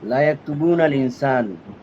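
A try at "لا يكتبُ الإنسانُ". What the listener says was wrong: না, লা ইয়াকতুবুল ইনসানা নাকি ইনসানু নাকি ইনসানি? করে খেয়াল করে বলেন। না, তুবু না তো নাই। ইয়াকতুবু। না, না তুবু নার হবে না।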